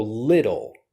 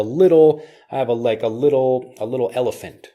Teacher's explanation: But when I'm teaching the pronunciation of this word, I'm using lidl. So the T becomes more of a D sound. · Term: flap T